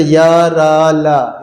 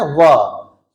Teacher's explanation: ठीक है, देखिए वाह वाह, यहाँ पे या, रा, ला, या, रा, ला, ओठ का प्रयोग नहीं हो रहा, लेकिन जैसे ही वाह वाह बोलना है ना, वाह, तो ओठ सट रहा है, तो वाह हो जाएगा। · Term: दंतोष्ठ्य